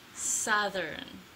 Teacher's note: make sure for th, the air comes out continuously